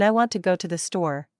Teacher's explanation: in I want to go to the store, we stress want, go, and store. The little words are quicker and softer. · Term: sentence rhythm